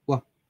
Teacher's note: দুই ঠোঁটের মাঝে সাহায্যে উচ্চারিত হয় শব্দ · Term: বিলাবিয়াল সাউন্ড